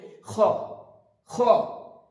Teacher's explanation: খ বলার সময় আমরা খেয়াল রাখবো খটা যখন আমি উচ্চারণ করব উপরের তালুর সাথে জীবের লাস্ট অংশ লাগিয়ে উচ্চারিত খর পরে একটা শব্দ হবে খ এটা যেন একদম খ হয়ে